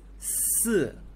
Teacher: Si is going down. The tone is going down. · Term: falling tone